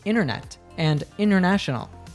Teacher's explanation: In American pronunciation, it is common to remove the T sound when it comes after an N sound and before a vowel sound